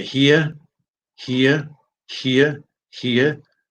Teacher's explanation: in British English neither of those ends with r